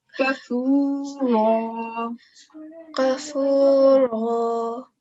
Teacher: But this tanween of fatha tan will be turned into vertical fatha. And because it's a fatha, so it will be read mufakham, thick raw